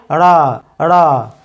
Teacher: আমাদের জিহ্বার অগ্রভাগ উল্টে গিয়ে আমাদের মূর্ধাকে স্পর্শ করতে হবে